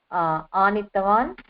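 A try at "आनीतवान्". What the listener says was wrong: Anitavan. Dirgha I. Anitavan.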